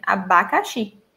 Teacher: It doesn't have any nasal sound in it.